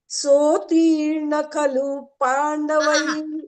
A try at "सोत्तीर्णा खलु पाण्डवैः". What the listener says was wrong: सोत्तीर्णा अत्र दीर्घमस्ति ती दीर्घमस्ति नापि दीर्घं सोत्तीर्णा खलु पाण्डवैरणनदी कैवर्तकः केशवः